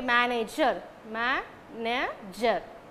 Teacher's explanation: It's a 3 syllabic word. The word ends with er. Then the stress falls on the first syllable ma.